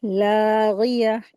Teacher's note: लाम के ऊपर खड़ी ज़बर है, दो हरकत खींच के पढ़ेंगे।